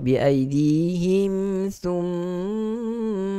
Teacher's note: mim syaddah hukumnya adalah wajibul gunnah, wajib dengung